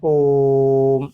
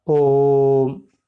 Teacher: protracted का अर्थ, इसमें भी प्रो प्रीफिक्स है, और ट्रैक्टेड माने खींचा हुआ, लंबा खींचा हुआ जो उच्चारण है, प्रदीर्घ उसको कहेंगे, वो प्लुत है